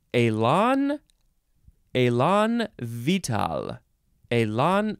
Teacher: I don't think there's any syllable that gets more emphasized